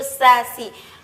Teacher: Huruf sin ketika dilafazkan itu beriringan dengan nafas atau keluarnya nafas